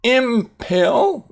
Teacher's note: That is actually in, and the in changes to an M when followed by a sound where both lips come together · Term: Bilabial